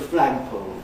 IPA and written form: ˋflægpəʊlz (flagpoles)